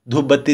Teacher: इसी तरीके से देखिए धूप बत्ती, कोई कहता है धूप बत्ती नहीं, धूप बत्ती दे दिया, वो ब ही हो जाता है, ये जो प है वो ब में ही कन्वर्ट हो जाएगा